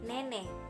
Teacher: agak rendah di depan tak bulat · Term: bunyi E